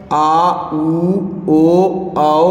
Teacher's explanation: पश स्वर है जीभ के पिछले भाग से बोले जाते हैं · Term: पश्च स्वर